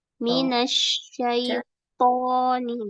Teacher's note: to memang syiddah ya, harus diketekan tapi jangan dihentak